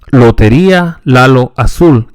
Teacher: The L is pronounced with the tip of the tongue against the alveolar ridge as in English. However, the tongue is held straight rather than slightly curled.